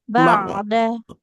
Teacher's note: bukan huruf kaf, tapi huruf ain, dia di tengah tenggorokan. Ba'da. Ba'da, jangan Ba'da.